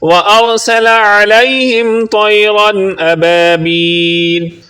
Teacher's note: سین کو سیٹی جیسی آواز میں پڑھیں گے